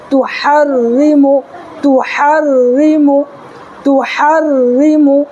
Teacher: را کے نیچے زیر ہے اس لیے ہم اس کو باریک کر کے پڑھیں گے